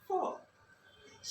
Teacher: 1 মানে এক উচ্চারণ 1 এখানে আমি নিচে ফনেটিক্স সাউন্ডের চিহ্নগুলো লিখে রেখেছি 1 2 3 4 ইংরেজরা বলছে 4টার ক্ষেত্রে একটু খেয়াল করে শোনো সবাই ইংরেজরা বলে 4 শেষের আর এর উচ্চারণটা করে না অর্থাৎ শেষে ভাওয়েলের পরে যদি কোনো আর থাকে ইংরেজি উচ্চারণ করে না